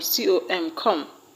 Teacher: These words have their stress on the first syllable. The word comfort has its stress on com, com.